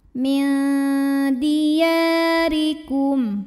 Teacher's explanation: huruf ra dibaca secara tarqiq karena barisnya kasrah, maka bacanya tipis